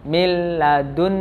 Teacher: Nah, contohnya di sini adalah nun sukun bertemu dengan la, miladun. Nah, miladun masuk ke huruf la tapi tidak dengan mendengung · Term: idgham bila gunnah